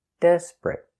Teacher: And the t at the end is a stop t.